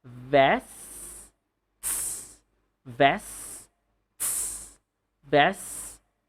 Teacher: So you should say vests and then the hi-hat TS.